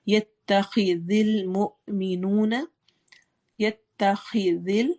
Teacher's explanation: خا موٹا پڑھنا ہے، ذال کو نرمی سے پڑھنا ہے، مو میں جھٹکا آئے گا، مینو واو مدہ ہے.